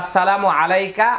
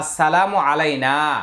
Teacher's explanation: এখানে কা তাড়াতাড়ি, এখানে না এক আলিফ টান হবে। আইন জবর আ, লাম ইয়া জবর লাই, আলাই, নুন আলিফ জবর না, আলাইনা এক আলিফ টান।